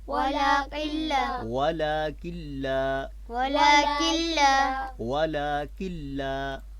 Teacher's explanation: ولكن لا غنہ جو ہے وہ یہاں پہ نہیں ہوگا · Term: ادغام